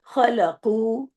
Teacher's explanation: خلقو اس کو آپ کو اس کو بھی اس کو لمبا کرنا ہے، دو حرکت کیونکہ پیش کے بعد واو آ رہا ہے